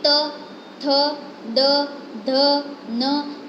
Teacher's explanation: फिर त, थ, ड, ध, न, ये सारे जो वर्ड्स हैं उसमें आपकी टंग है वो आपको आपके टीथ को टच होती है, यानी कि वो सब जो है वो डेंटल है